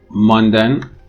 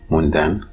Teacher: So a may be raised to u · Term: vowel raising